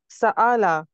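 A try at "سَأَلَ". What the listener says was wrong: सआला, आइन नहीं निकाला ना, हमजा है।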